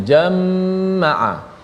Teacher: Imam Khalaf membaca dengan jama'a, dibaca dengan sabdu, mim diletakkan sabdu. Jama'a bila ada sabdu kena dengunglah, huruf mim tu bila sabdu kena dengung